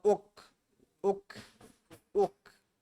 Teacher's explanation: How do you make this sound for dhamma? You do a oo sound, and oo means your lips come together to say oo.